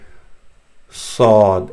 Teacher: you let the teeth open from the beginning and don't move your lips in a round fashion. Instead, you just keep them open.